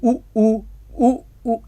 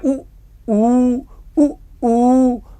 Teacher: ऊ कैसे उच्चारित होता है, तालु ओष्ठ से। ऊ आपका ओष्ठ से होता है बच्चों, ऊ ओष्ठ से होता है